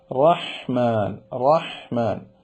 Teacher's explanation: വരും അതാണ് റഹ്മാനിലും റഹീമിലും ആവർത്തിച്ചു വരുന്നത് അപ്പൊ ഹാ ന്റെ ശബ്ദം സുന്ദരമായിരിക്കണം തൊണ്ടയുടെ മധ്യത്തിൽ നിന്നാണ് കാറ്റ് നടത്തി ആ പ്രത്യേക സ്വരം വരണം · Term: തൊണ്ടയുടെ അക്ഷരമാണ്